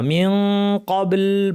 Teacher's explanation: হবে এই ব্যতিক্রমটা হচ্ছে শুধুমাত্র কাফ এবং কাফের ক্ষেত্রে মনে রাখবেন পুরোপুরি জিহ্বাকে মাখরাজে লাগিয়ে নাক থেকে গুন্নাটা করবো যে সেটা ভারী গুন্না হবে কারণ কাফ ভারী হরফ · জিহ্বাকে কফের মাখরাজে এবার পুরোপুরি লাগিয়ে নাক থেকে গুন্না করতে হবে